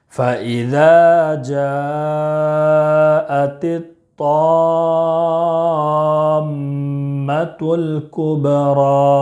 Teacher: اور طا میں مد لازم کلمی مثقل، اس کو 5 الف کے برابر کھینچ کر پڑھیں گے · اس کو 5 الف کے برابر کھینچ کر پڑھیں گے، اور میم مشدد ہے اس لیے میم مشدد کو 1 الف کے برابر غنہ بھی کریں گے · جیم میں مد متصل ہے، 2 الف، 2.5 الف، 4 الف تک کھینچ کر پڑھیں گے · ذال میں الف مدہ ہے، ایک الف کے برابر کھینچ کر پڑھیں گے ، اور جیم میں مد متصل ہے، 2 الف، 2.5 الف،